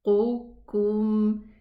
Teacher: Here this qaf is elevated. But the kaf is not. So قُكُم. And both of these letters, they are pronounced, they exit from the same place.